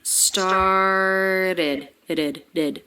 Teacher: the vowel sound here is the I as in sit vowel followed by the D consonant. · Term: ED ending